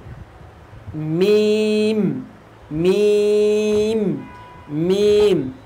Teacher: ঠোঁটের শুকনো অংশ থেকে উচ্চারিত হবে